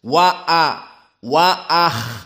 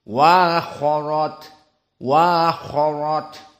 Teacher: Hamzah qiraah jumhur dalam keadaan tahkik maknanya hamzahnya dibaca dengan jelas